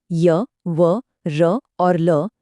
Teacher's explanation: ये सभी यण प्रत्याहार में आते हैं। इन्हें अर्ध स्वर भी कहा जाता है और इनका प्रयत्न ईषत् स्पृष्ट होता है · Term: अंतस्थ व्यंजन